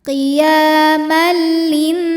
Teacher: tanwin dimasukkan atau dileburkan ke lam tanpa berdengung, jadi cukup ditekan tanpa ditahan. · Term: idgham bila gunnah